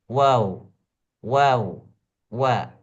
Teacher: wau mulutnya rongga mulut itu seperti O Bulat Wau Wau maka ujung bibirnya itu berbentuk bulat seperti donat